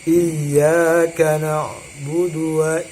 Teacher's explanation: Jadi dalam mengucapkan iyyaka, ya, wa iyyaka itu harus disyidahkan, ya. Jangan ya, tapi harus disyidahkan.